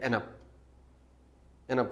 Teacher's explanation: Consonant है ना, एन अप, D तो उड़ गया ना, साउंड ही नहीं है। अब एन को हमने मिलाया यू के साथ, यू is वॉल, एन is consonant, तो ये एंड अप की बजाय एन अप, एन अप हुआ। अब ये क्या हुआ कि 2 वर्ड्स मिलके एक वर्ड बन गए। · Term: लिंकिंग साउंड्स